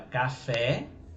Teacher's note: a palavra café, você vê que o fé ele é mais forte do que o K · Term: tonicidade